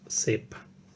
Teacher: de nuevo la I influye sobre la A, la va a cerrar en E y tenemos sepa